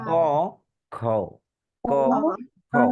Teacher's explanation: কয়ের চাইতে খতে বাতাস জোরে বের হয়, এটা মহাপ্রাণ।